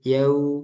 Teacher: karena waw, waw dan domah ini keadaan bibir kita tuh dimonyongkan. Yau, yau, seperti u, yau, gitu ya. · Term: waw sukun